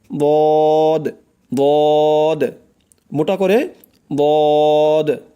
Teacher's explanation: জিহ্বার গোড়ার কিনারা উপরের মাড়ির দাঁতের গোড়ার সঙ্গে লাগাইয়া উচ্চারণ হয়